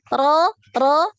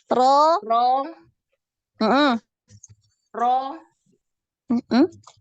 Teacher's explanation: Ro naik ya, pangkal lidahnya naik. Ketika fathah dan dhammah pangkal lidah naik ya. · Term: tebal